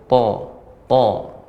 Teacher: To tidak bagian depan, kemudian to ini diantara huruf isti'la, jadi naiknya suara ke langit-langit.